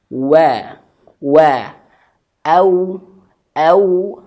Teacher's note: Ayah, Bunda, setiap wau yang sukun atau mengucapkan huruf wau itu harus dimulai dengan monyong. Karena huruf wau itu makhrijul hurufnya dua bibir yang monyong. Wa wa wa au au.